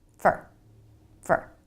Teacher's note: most of the time in a sentence americans pronounce it fer really fast with the reduced vowel